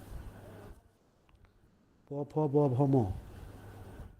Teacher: दोनों ओठों को मिला कर के प फ ब भ म